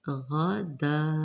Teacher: یہاں پہ حمزہ آ رہی ہے، بڑی مد ہے، مد متصل، 4 سے 5 حرکات لمبا کریں گے۔ غدا، غائن کو بھی موٹا پڑھیں گے پر۔